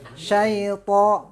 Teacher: Huruf to itu sama dengan ta. Bedanya apa? Pertama tidak hamas ya. Jadi harus kuat.